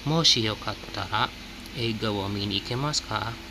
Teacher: So you see, minasan, usually sometimes you may put comma here after moshi, but it's also okay if you don't put comma after moshi, because moshi, the shi in moshi is slightly rising tone